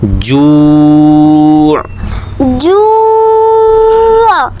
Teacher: اس کا وقف جو ہے وہ کافی مشکل ہے، تو وقف میں اکثر طالب علم غلطی کر دیتے ہیں، جو حمزہ کی آواز نکالتے ہیں. تو حمزہ کی آواز نہیں آنی چاہیے بلکہ عین کی آواز آنی چاہیے